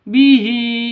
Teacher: bihi hi panjang dua ketukan